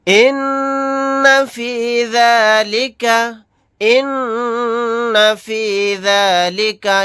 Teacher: یہاں پر نون کے اوپر تشدید ہے، یہاں پر ہم غنہ کر کے پڑھیں گے